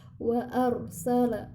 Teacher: ketika mengucapkan huruf ra ujung lidah kita ditempelkan ke langit-langit. Wa arsala, jadi tetap ada getaran meskipun sedikit.